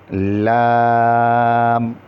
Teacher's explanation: اس کے دائیں یا بائیں جانب مسوڑوں کو جب زبان کا کنارہ لگتا ہے تو اس سے لام ادا ہوتا ہے